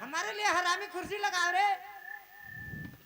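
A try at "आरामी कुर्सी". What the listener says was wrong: अरे आरामी का थे, हरामी नहीं बोले।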